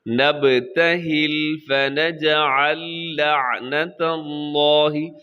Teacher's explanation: یہاں لفظ اللہ کو آپ موٹا پڑھیے گا کیونکہ اس سے پہلے تا کے اوپر زبر ہے